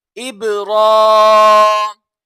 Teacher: रा के ऊपर खड़ा ज़बर है तो रा को पुर पढ़ा जाएगा